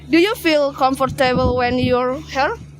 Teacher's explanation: The word pronounced by the speaker is her while the actual form is here.